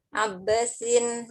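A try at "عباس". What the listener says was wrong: Abbasun apa sin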